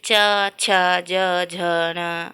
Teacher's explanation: कुछ ऐसे वर्ण रहते हैं जिसको हम बोलते हैं तो वो तालु को स्पर्श करते हैं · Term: तालव्य